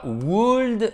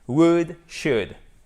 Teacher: on ne prononce pas le L à chaque fois